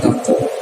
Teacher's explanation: ko bagian dari huruf qalqalah yang memiliki sifat tebal ya, maka ketika memantulnya pun harus dijaga ketebalannya. Jangan take, bukan take tapi taqo.